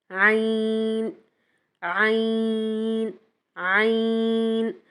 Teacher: عین ہمارے حلق کے مڈل پارٹ سے ادا ہوتا ہے اور سیم ہا کا مخرج عین اور ہا کا سیم مخرج ہے تو ایک ہی مخرج سے ادا ہوتے ہیں۔